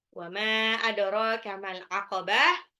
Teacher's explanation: Ro-nya 2 harokat, dalnya di qalqalah pantul. Al-aqabah alif lam qamariyah.